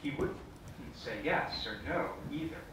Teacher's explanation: it's not quite yes his tongue is lower than mine usually is